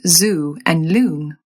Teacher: You'll drop that y sound for words starting with L, S, and Z.